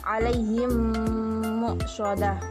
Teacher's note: Jika terdapat mim sukun atau mim mati bertemu dengan huruf mim, maka bacaannya disebut idgham mimi. Maka cara membacanya adalah seperti menyuarakan mim rangkap atau ditasydidkan dan wajib didengung